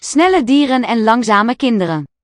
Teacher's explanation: This N of dieren is now carried over to the next syllable. It's still pronounced.